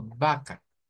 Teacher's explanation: el mismo movimiento o sea digo burro y digo vaca y usamos lo mismo los dos labios y no debe ser así lo correcto debe ser burro está bien así burro burro y